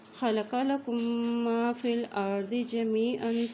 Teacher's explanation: میم ہے، میم کے اوپر شد ہے تو یہاں پہ ملاتے ہوئے غنہ کرتے ہوئے آگے پڑھیں گے